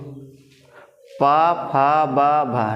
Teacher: प वर्ग क सभी किससे लग रहे हैं ओठ से ओठ की सहायता से बोले जा रहे हैं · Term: ओष्ठ व्यंजन